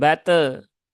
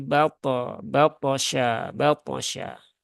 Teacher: dia ada Qalqalah dan qalqalahnya termasuk Qalqalah yang tebal ya karena th punya sifat istilla